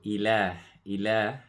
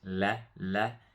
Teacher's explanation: the lam will be light, la, la, and then the lam will also stretch because there's a mad on here for to stretch.